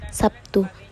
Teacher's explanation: Kata Sabtu dalam bahasa Indonesia lazim diucapkan Sabtu. Terlihat bunyi B berubah menjadi bunyi P sebagai akibat dari perubahan bunyi T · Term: asimilasi fonetis